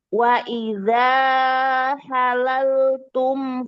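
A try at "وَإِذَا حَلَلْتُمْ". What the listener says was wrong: Izalnya itu dua harokat Kak. Wa idza halaltum.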